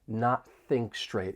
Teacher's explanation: we can move right into that voiceless TH sound in think, because your tongue is going to be in the same position right up top behind your front teeth.